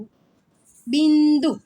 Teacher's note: આપણે અનુસ્વાર લખીએ છીએ પણ જ્યારે આપણે બોલીએ છીએ ત્યારે ન નો ઉચ્ચાર થાય છે